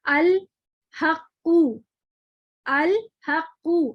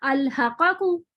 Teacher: अगर कलकला हर्फ पर तशदीद हो तो तशदीद का पहला हर्फ जो कि साकिन है तसादुम से अदा होगा और दूसरा वाला तबाउद से